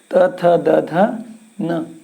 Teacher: हमारी जीवा दांतों को स्पर्श कर रही है। ता बोलेंगे, आपकी जीभ और दांत दोनों स्पर्श किए हुए, इसलिए त थ द ध न।